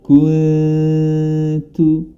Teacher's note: Huruf nun berharokat sukun bertemu dengan ta, maka hukum bacaannya adalah ikhfa atau disamarkan